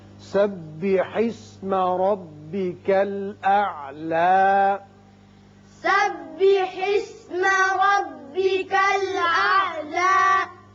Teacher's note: یہاں را کو آپ پر کیجئے اس لیے کہ اوپر زبر ہے۔ یہاں وقف کی صورت میں اعلیٰ کھڑا کر کے پڑھیں گے، حالانکہ اوپر زبر آپ کو نظر آتی ہے، لیکن وقف کی صورت میں ایک الف کے برابر آواز اوپر کھینچیں گے۔